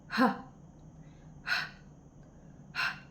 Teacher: At sa pasutsot naman ang letrang H na sa punto ng artikulasyon na glutal.